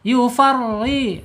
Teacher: tipis, tidak boleh tebal karena harokatnya kasroh